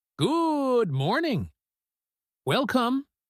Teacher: Notice how she stretches the vowels. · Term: public speaking rhythm